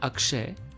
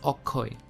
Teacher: bengali tends to keep this consonant vowel consonant vowel structure and really does not like this consonant consonant pair and therefore the sounds sound softer because of the vowel present